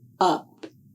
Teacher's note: To make the sound of the letter U, this is an open mouth voiced sound. The sound is made with the tip of the tongue in a low position in the front of the mouth, and the back of the tongue is raised.